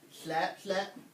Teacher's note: You kind of have to push air out the side of your mouth.